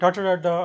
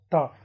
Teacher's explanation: called retroflexes because when you utter them, you fold your tongue backwards, ta, right, and therefore they are called retroflexes.